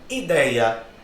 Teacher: Não tem mais acento. É um termo paroxítono terminado no ditongo aberto, né? No ei.